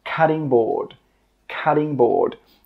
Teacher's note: I know it's spelt with a T, but when we pronounce it, we actually use a D sound.